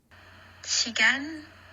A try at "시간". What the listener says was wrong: 시간. 시간. Euh, Pas de problème avec la prononciation, c'est plutôt comme avant. Euh, le can est un peu trop long, donc vaut mieux arrêter le can un peu plus court. Et elle monte un petit peu avec le gan. Donc shigan, au lieu de shigan, shigan.